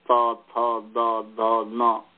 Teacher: ऊपर वाले जो दांत है उस दांत स्थान से वर्ण बोले जाता है, त थ द ध न, ऐसा, या स थ द ध न, इस तरीके से दांत के मूल से या दांत से ऐसा कहेंगे, तो ये दंत्य वर्ण है।